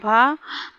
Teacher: हिंदी में स्पर्श घोष महाप्राण ओष्ठ व्यंजन ध्वनि है भ